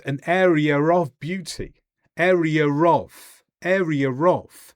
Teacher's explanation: And R between area and of, area of. We also connect vowels to consonants by joining them up when the word ends with a vowel and the next word starts with a consonant. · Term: intrusive sounds